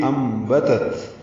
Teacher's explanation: نون ساکن کے بعد با آنے کی وجہ سے اقلاب ہو رہا ہے، اب نون کی جگہ اوپر چھوٹی میم لکھ دی گئی ہے